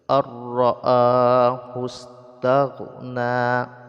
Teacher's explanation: Jadi nun sukunnya tidak lagi dibaca tapi langsung pada tasydid ra. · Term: idgham